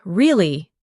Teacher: when you ask a question like really, your voice goes up slightly at the end. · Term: intonation